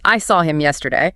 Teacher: The default stress would fall on yesterday, right? Because it's the final content word. Correct. That's just a neutral statement of fact, no special meaning.